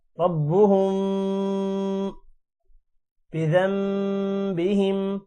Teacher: اب جیسا کہ یہاں پر ربهم غنہ ہو رہا ہے کیونکہ آگے با آ رہا ہے